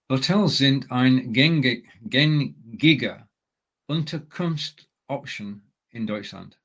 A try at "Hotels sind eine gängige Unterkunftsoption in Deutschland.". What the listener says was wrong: Now, you just made the one common mistake of reading option and therefore reading it in English. Option, that's it. Hotels sind eine gängige Unterkunftsoption in Deutschland. So we've got 2 words there, Unterkunft and Option. And putting them together, we need the S so that it can flow as one word. So Unterkunftsoption.